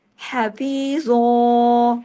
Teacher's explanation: ایک زبر اور ایک الف کے برابر پڑھتے ہیں، حفیظوں، اور زو کو ہیوی بھی کرنا ہے کیونکہ وہ اس لفظ کی ڈیمانڈ ہے۔